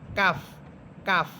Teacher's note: আর কাফ জিহ্বার গোড়া থেকে একটু উপরের দিকে উঠতে হবে। একটু উপরের দিকে উঠে তারপর উপরে তালুর সাথে লাগবে।